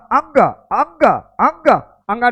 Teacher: पा रहे हो यानी अंगा का भी उच्चारण कहां से है कंठ के साथ ही नाक से है उच्चारण